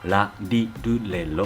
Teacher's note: In Japanese, the [r] and [l], is the same, same pronunciation.